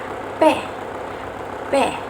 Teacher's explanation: Huruf P ketika disebutkan maka bibir bawah akan bergerak ke bibir atas. Menyentuh bibir atas. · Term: bunyi bilabial